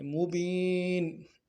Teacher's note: مبین میں یا مدہ ہے، اس کو ایک الف دار میں کھینچیں گے